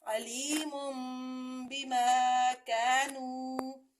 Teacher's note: لیکن یہاں پہ ہم نے اس نون تنوین کو میم سے بدلنا ہے، میم پیش میم مم ہو جائے گا اور غنہ بھی ہوگا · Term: اقلاب